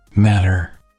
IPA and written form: ˈmæɾər (matter)